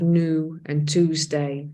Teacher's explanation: And so we have new and Tuesday, for example, without that additional y sound